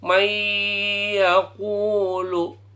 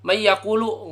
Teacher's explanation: nggak boleh cepat-cepat harus agak lama harus ada dengungnya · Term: Idgham Bighunnah